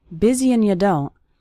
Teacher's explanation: that's very common for the word and to get reduced to just an n Sound